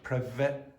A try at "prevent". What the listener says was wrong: Okay, so listen to the way prevent is pronounced. So a lot of these times it seems like this is happening. Okay, so the b instead of the v. So it's not prevent, it's prevent. V. Or to be honest, even it was sounded a bit like that.